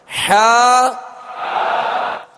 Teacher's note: حا وسط حلق سے، درمیان حلق سے